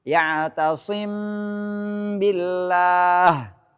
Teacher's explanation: Mengucapkan mim di antara sifat izhar dan idgham tanpa tasdid disertai dengan dengung ketika setelahnya ada huruf ba. · Masih ada yang terbaca sifat dengung namanya ikhfa.